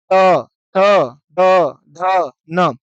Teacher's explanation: तवर्ग में आने वाले जितने भी वर्ण हैं, वो जब तक जीभ दांतों को टच नहीं करेगी तब तक वो बोले नहीं जाएँगे